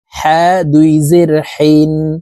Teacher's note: হা হরফের উচ্চারণ হলুকের মধ্যখান থেকে পড়তে হবে কারণ হার মাখরাজ হলো এর মধ্যখান থেকে হবে হা দুই জের